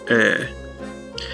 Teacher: This is a mid-front rounded vowel, so it's similar to E, except you round your lips and it becomes Ö, like a front O sound.